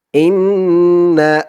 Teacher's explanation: হামজা দিয়ে নুন ধরবে এখানে ওয়াজিব গুন্না হবে